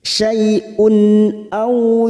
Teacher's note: tanwin dumatain yang bertemu Hamza kita baca jelas tanpa mendengung namanya bacaan idhar halq